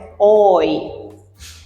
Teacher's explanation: the vowel o that glides to the front vowel e and forms a oi.